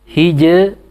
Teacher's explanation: Tipis ya. Karena sebelumnya sukun, sebelumnya kasrah.